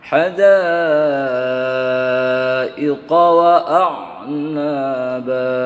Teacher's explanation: Ini hadaiqa mad wajib muttasil. Panjangnya 5 harakat.